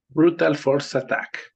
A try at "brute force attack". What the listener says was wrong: brute. Brute. Aguas, dijiste brutal. Entonces estás diciendo, ya dijiste que fue brutal. No, es brute force.